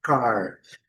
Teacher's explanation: o R ao final tem que ter aquele R caipira